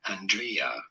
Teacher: Some people do pronounce it as Andrea, with an emphasis on the second syllable.